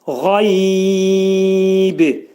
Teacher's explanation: Qa boğazın yuxarısından çıxarılır.